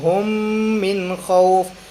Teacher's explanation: دونوں میم مل رہے ہیں، ادغام ہو رہا ہے اور میم مشدد بھی ہے، ادھر غنہ بھی ہے، تو یہاں بھی ادغام مع الغنہ۔